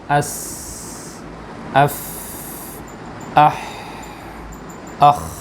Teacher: سارے حروف کے اندر جو ہمس والے ہیں ان میں پستی آتی ہے، آخر میں جا کر بالکل پستی آ جاتی ہے